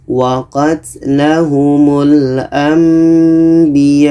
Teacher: Jadi kita dengungkan. Dengungnya 2 harakat. Nun mati kita tukar kepada mim. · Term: iklab